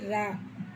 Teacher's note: நாவின் நுனி மேல் அன்னத்தில் முதல் பகுதியை தொட்டு வருவதால் தோன்றுவது